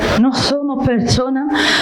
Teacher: tiene esa pronunciación de la S, que es casi una J. o una especie de sonido híbrido entre la A y la S.